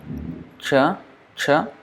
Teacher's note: when you say cha, that is the middle of the tongue is touching the top, and then there is a retroflex, or this is also called cerebral. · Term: palatal